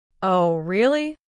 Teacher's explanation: Express genuine surprise. Use a rising intonation at the end.